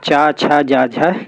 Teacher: जिनका उच्चारण करते समय जीवा ऊपर उठकर ताल को स्पर्श करती है, फलस्वरूप कंठ छिद्र जो अवरुद्ध हो जाता है तथा हवा को बाहर निकलने में संघर्ष का सामना करना पड़ता है, अतः इन्हें स्पर्श संघर्षी व्यंजन कहते हैं।